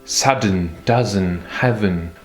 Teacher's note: j'ai prononcé la dernière syllabe, la syllabe faible, avec un son E très discret